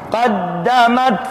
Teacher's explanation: awas taknya berdesis angin